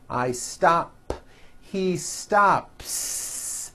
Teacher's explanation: I stop ends with an unvoiced P · the S you add also remains unvoiced.